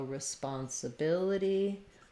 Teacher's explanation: In responsibility, we have the stress on the bil syllable, third to last syllable.